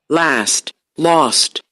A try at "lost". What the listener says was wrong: It's not so back and rounded as I pronounce it, but the difference between these two is the same. One case is more front, and another one is more back. And rounded, and roundness lowers all the formants.